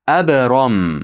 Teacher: Ab bu yerda qalqala qilishdan chiqmasin.